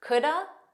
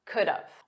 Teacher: you can use duh and say coulda, or you can use dove and say could've